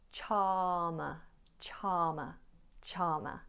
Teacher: you'll notice that I'm not pronouncing the letter R